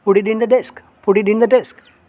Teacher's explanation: Sir, here T only has come at last, sir. But see, next word is starting from vowel. That's why you have to use, instead of T, you have to use D.